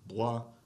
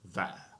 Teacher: So b-b-b as in bois, the second one in the list, your lips are coming together, b-b-b. But v-v-v-verre, your lower lip is touching your teeth